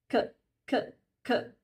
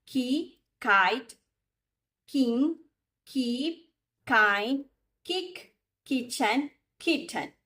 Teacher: Release the air quickly. There is no vibration, just air. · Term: K sound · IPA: /K/